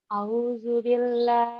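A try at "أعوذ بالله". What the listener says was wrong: Jangan au, alif dan ain. Au, gua au gelap. Au ya. Au.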